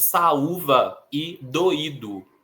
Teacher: o U formando hiato, sendo a sílaba sozinha e sendo a sílaba mais forte, né, a tônica, e doído também temos hiato, o I estando sozinho na sílaba e sendo a sílaba mais forte. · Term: sílaba tônica